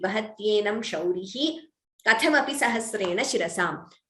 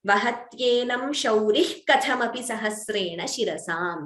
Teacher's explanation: So you can pause there. If you pause, we chant the Visarga completely.